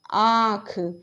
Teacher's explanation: हमारी ध्वनि जो होती है मुंह एवं नाक दोनों से निकलती है